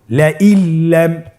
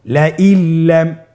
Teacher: নুন সাকিনকে আমাদেরকে পরবর্তী হরফের সাথে মিলিয়ে গুণা ছাড়া পড়তে হবে। আপনারা আমার সাথে বলুন লা ইল্লাম, আবার বলুন লা ইল্লাম।